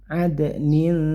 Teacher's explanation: bunyikan samar disertai dengung, jadi samarkan kasrotain dimasukkan ke huruf tak, maksudnya bersiap masuk ke huruf tak, jadi tidak jelas nunnya tapi samar-samar ke huruf tak. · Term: ikhfa